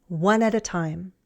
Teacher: The preposition at is also a function word, so I don't use the full short A sound, at, I reduce it.